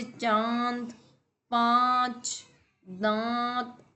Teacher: चंद्र बिंदु को अनुनासिक बोलते हैं, इसका उच्चारण जो होता है वो नाक और गले से होता है